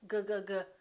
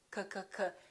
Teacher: G and K have the same point of articulation. It happens back here.